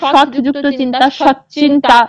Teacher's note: ত আর চ মিলে চয় চয় হচ্ছে